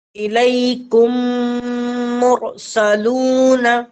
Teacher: یہاں پر ادغام شفوی ہو رہی ہے، یعنی میم ساکن کے بعد میم آئے تو میم کو میم سے ملا کر گنہ کے ساتھ پڑھیں گے